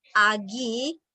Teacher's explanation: A itu vokal rendah, I itu vokal tinggi gitu kan. Sehingga tinggi ke rendah itu dia jauh jaraknya gitu kan.